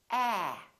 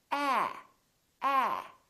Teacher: So, your lips are open and your tongue is down and your tongue is tense. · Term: ah sound